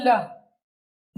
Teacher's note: श्वास या फिर वायु जीहा के दोनों ओर से जीहा के बगल से निकलती है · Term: पार्श्विक वर्ण